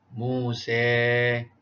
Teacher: kalimah Musa dibaca dengan imalah Musa, ya, bacaan condong bagi tempat-tempat yang tertentu